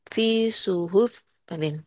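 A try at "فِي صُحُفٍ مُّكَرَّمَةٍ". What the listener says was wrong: Jangan ditekan kepanya. Dilepas.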